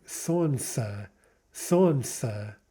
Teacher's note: The word for sun, the L drops out